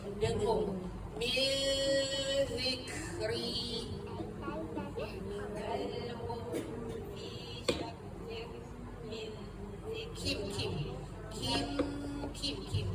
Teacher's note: Dia jenis dengung yang tersembunyi samar-samar. Jangan kita rapat bibir eh. Jangan rapat. Ha keadaan kita penyebangkan lidah tu terapung tergantunglah sebab huruf zal dan hujung lidah kita dikeluarkan sedikit ketika mana de dengung. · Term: ikhfa